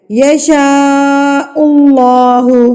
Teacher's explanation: اللہ سے پہلے پیش آ گئی ہے، تو آپ نے اس اللہ کو پر کر کے پڑھ دینا ہے